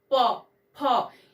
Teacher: उसी तरह से होठ, ओष्ठ जिसको कहते हैं, प वर्ग का उच्चारण, इसमें हमारे होठ प, फ, इसमें निचला होठ हमारा जाकर के ऊपरी होठ को पहले बंद करता है, वायु को रोकता है और जैसे ही वो नीचे होठ वापस अपनी जगह पे आता है तो हमारे मुंह से ये ध्वनियां यानी कि ये वर्ण उच्चरित होते हैं।